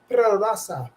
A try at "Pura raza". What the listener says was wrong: Raza, you gotta roll it. Raza. Raza.